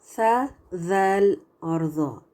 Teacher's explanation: when the tip of the tongue touches the edges of the top teeth then these three letters are articulated